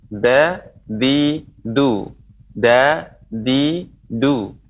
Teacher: Da, ya, dia bukan termasuk huruf hams, ya, bukan yang mengalirnya udara. Ya, pengucapannya penggan punggung ujung lidah.